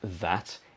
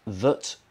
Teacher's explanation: it's that with a schwa